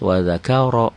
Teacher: Wa dzakara ini enggak ada hukum. Wa-nya qasar, da-nya qasar. Qasar itu apa? Pendek. Ka-nya qasar, ro-nya baru tebal karena barisnya di atas.